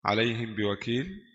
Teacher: Mim bersukun disamar pada huruf ba berharakat kasrah dengan gunna dua harakat. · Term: ikhfa syafawi